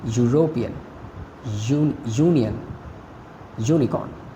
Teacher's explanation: these begin with a consonant sound and that of y